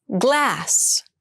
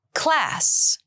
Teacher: glass has the voiced G sound and class has the unvoiced C Sound